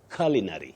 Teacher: That U takes what we call the mid-central sound